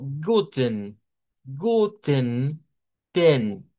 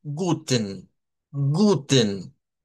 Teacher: Siempre que termina algo con EN o con ES o con EM, vamos a ir viendo de que la schwa o la shba se puede quitar. De ahí no es necesario pronunciarla.